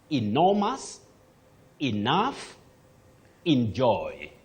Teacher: But when you check, you realize that the best way to say or pronounce those words, you use the sound E at the beginning. Then the stress is on the second syllable